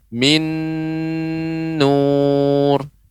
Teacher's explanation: Ya, yaitu idgham bi gunnah min nur, min nun sukun bertemu dengan nun yang berharokat min nur. Nah, ini diidghamkan, dimasukkan tapi disertai dengan gunnah.